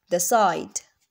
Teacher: by the F first initial sound of the second word here the T sound changes to S making it easier to pronounce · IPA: /ðæt saɪd/ → [ðæs saɪd]